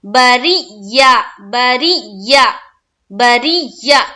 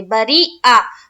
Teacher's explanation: را کو جب یا سے ملائیں گے تو ایک قسم کی سختی پیدا کریں گے